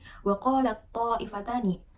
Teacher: ta-nya itu melebur gitu, sehingga kita membacanya hanya huruf to saja. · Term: idgham kamil